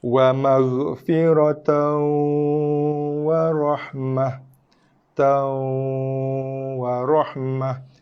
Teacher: Idgham nakis bacaan memasukkan tapi jangan tekan bacaan dengunya. Ya betul. Jangan tekan bacaan dengung.